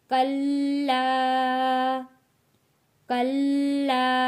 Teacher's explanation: یہاں پہ لام کے اوپر تشدید ہے، رک کر تھوڑا سا ہم نے اس کو سختی کے ساتھ پڑھنا ہے لام کو